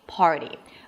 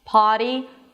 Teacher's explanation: Now of course the obvious difference is the fact that one has an R party and the other doesn't potty. Aside from that everything else is absolutely the same in American English.